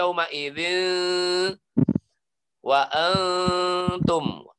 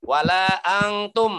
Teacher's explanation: Disembunyikan hampir seperti bunyi ang, tapi bukan ang. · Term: ikhfa